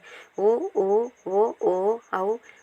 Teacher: உதடுகளை குவிப்பதால் பிறக்கின்றது